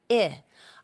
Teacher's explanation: I can feel the vibration in my throat. So I is a voiced sound because your voice box is on when you say the sound. We call it voiced.